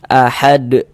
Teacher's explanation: Jadi kalau kita baca Al-Qur'an berwakaf, kita berhenti kita di huruf qalqalah, maka itu dia menjadi qalqalah kubra.